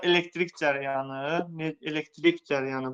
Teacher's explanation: Vurğu hara düşür? Axıra düşür.